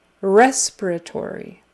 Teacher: it's on the first syllable and then the fourth. But the strongest is on the first syllable.